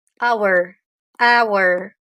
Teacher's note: le H n'est pas prononcé